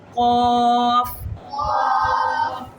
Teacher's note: जो हमारा हाथ है और जुबान की जो जड़ है उसको आपस में मिलाने से दा होता है कौफ कोफ नहीं कौफ और ये जो कफ है ना ये वाली कफ जो नुक्तों वाली कफ है ये मोटी पढ़ी जाती है · یہ والی قاف جو نقطوں والی قاف ہے یہ موٹی پڑھی جاتی ہے